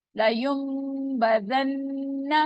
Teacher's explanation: नून साकिन के फौरन बाद बार है, तो हम नून की आवाज को मीम में चेंज कर देते हैं। लयुम्बदन्ना, नून मुशद्दद है, गुन्ना करेंगे।